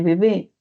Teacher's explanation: también va a remitir a sonido B, de bebé, bilabial